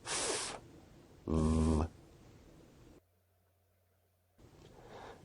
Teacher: Labiodental sounds are produced with the upper teeth and the lower lip, such as f, v.